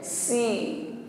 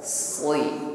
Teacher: Huruf sin istifal, ya lidahnya di bawah sehingga bunyi hurufnya ringan